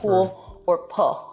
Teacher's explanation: an L turning into a vowel in a word like pool or pull